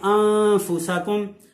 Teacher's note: جب اخفاء کریں گے تو زبان جو ہے حضرات محترم تالو پہ نہیں لگنے دیں گے، اس کے مخرج میں نہیں لگنے دیں گے، یعنی کہ چھپا کے پڑھنا ہے، تو پھر اس طرح سے پڑھا جائے گا آنتا۔ · نون کو جب ادا کیا جاتا ہے تو زبان اس کے مخرج میں اوپر تالو پہ لگتی ہے، لیکن جب اخفاء کریں گے تو زبان جو ہے حضرات محترم تالو پہ نہیں لگنے دیں گے